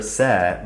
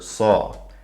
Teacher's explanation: the name of the letter ser versus the dark letter saw the sound of the alif goes from a as in the word sand to ah as in the word saw